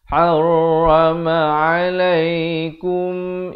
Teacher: Ha pedas makhraj di pertengahan kerongkong.